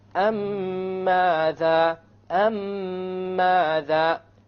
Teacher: You have a ghunna on the meme, and you will make the merging or the idgham, and there will, in the Quran it will be written with a shadda, so you will even know that there will be a merging here. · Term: idgham shafawi